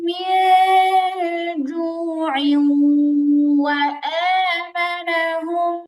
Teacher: তো এখন আমরা যখন মিলায় পড়বো তখন মির জু ইউ, আইনটা গিয়ে ওয়াওকে ধরবে, তানবিনের পরে ওয়াও, ইদগামে বা গুন্না, গুন্না সহ মিলায় পড়তে হবে।